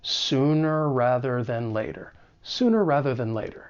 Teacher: that final R sound in sooner is going to overlap with the beginning R sound in rather. And it just allows us to make a very smooth transition from one word to the next sooner rather than later. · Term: co-articulation